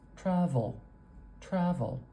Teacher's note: travel travel we've got awah and then an L travel travel can you hear when I say that there's a little more stress at the beginning